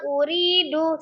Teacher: sukun sebelumnya kasrah di huruf ro ri dibaca dua harakat dan tipis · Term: mad